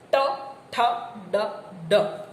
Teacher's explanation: તાળવાના સૌથી ઉપરના ભાગને જીભનો આગળનો ભાગ અડે · જીહ્વાગ્ર તલ, જીભનો આગળનો ભાગ જ્યારે તાળવાના મધ્ય ભાગને સ્પર્શે ત્યારે મૂર્ધન્ય.